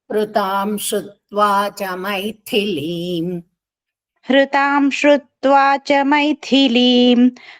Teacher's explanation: థ పొట్లోకుంది మహాప్రాణం గట్టిగా పలకాలి